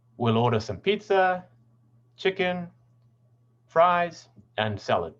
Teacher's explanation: the falling intonation and the end at the end tells us tells the listener that the list is finished